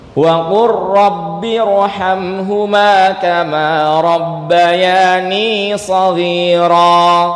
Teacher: lam sukun ketemu R entah dia itu fi'il entah dia huruf ataupun yang lainnya maka diidgam kan